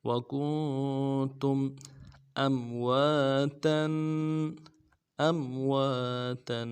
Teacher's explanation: نون کے ساتھ ملانا ہے، نون ساکن غنہ کریں گے، اور تم میں میم ساکن ہے، یہاں پہ اظہار کے ساتھ پڑھیں گے